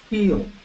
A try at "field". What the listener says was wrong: And then la D al final más fuerte.